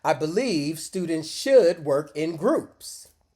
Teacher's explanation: Excellent. Notice how we stress meaning words, believe, should, groups, not the small grammar words. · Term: stress timed